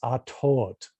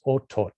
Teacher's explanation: The A and the A becomes the same as the O, and the final T becomes a ch sound. That's still to happen in Yucatecan.